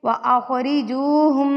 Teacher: یہ جو میں ناک میں آواز لے کے گئی ہوں نا، اس کو کہتے ہیں غنہ